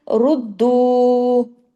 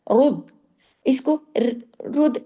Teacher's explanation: अच्छा फिर आगे देखिए, रुद्दू, रा पेश, रा के ऊपर पेश है, इसको क्या करना है? हैवी पढ़ना है, रुद, इसको रुद, ऐसे ऐसे बारीक नहीं, रुद, यानी मुंह भर के, आपका मुंह भर के।